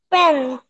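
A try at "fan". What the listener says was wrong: ফ্যান বাচ্চা, পেন না, প বলা যাবে না, ফ্যান বলতে হবে।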